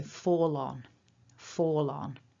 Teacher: because fall ends in a consonant and on begins with a vowel, we are highly likely to link those two together